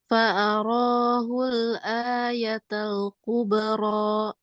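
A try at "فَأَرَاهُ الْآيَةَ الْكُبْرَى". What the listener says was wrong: Iya, bagus. Ujungnya jangan ditambah-tambah hamzah. Sekali lagi.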